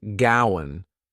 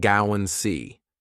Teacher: Go and see sounds like gowan see, and the D drops. So, just to confuse you, we add a w and drop the duh. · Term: w sound